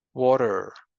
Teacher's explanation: And there we find a weakening of the T sound and that is a flapping.